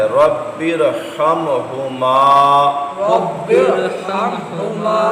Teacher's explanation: را ساکن سے پہلے زیر تو ہے لیکن دوسرے کلمے میں ہے، اس لیے را کو ہم نے پر پڑھنا ہے